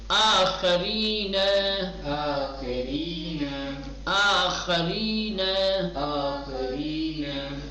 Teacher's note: را جب مکسور ہوتا ہے تو ترقیق کے ساتھ پڑھا